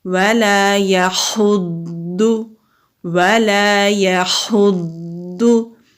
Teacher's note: مستعلیہ حروف قرآن پاک میں ہمیشہ موٹے پڑھے جاتے ہیں، تو ضاد کو ہم مضبوطی کے ساتھ بھی پڑھیں گے کیونکہ ضاد کے اوپر تشدید ہے اور ذرا رک کر پڑھیں گے